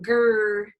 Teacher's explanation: Or it can also be produced as a bunched R, where you're pretty much pulling it back into a velar-like position. Like you think about where you say, you go grr, your tongue does not move much from the G to the That's more your bunched R.